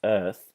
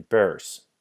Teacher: in English, your lips are going to be spread, whereas in the Dutch noise, your lips are going to be rounded. So make sure that when you're practicing this noise, that it almost appears as if you're smiling while you speak.